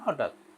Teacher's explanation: ধর আগে একটা হ আছে, তো হতে খানিকটা জোর পড়ে যায়, তারপরে ঠ এর জোরটা কমে যায়, যার ফলে একটা প্রবণতা হঠাৎ।